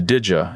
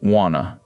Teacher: Sixth, assimilation, where did you blends into did ya and want to becomes wanna.